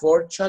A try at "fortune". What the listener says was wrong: So T-U-N-E is chin, not chan. Chin. زي chin. للدقن chin. Fortune.